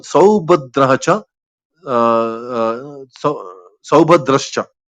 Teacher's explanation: So Visarga is becoming Shakara.